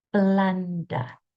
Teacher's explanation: It's a f sound. My lips are not closing, not b. I'm blowing air with my teeth on top of my bottom lip.